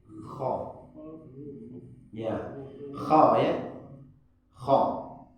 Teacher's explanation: Disebut dengan huruf tebal. Kha bunyinya o. Kha bukan ko. Bukan ko. Kha ada angin keluar.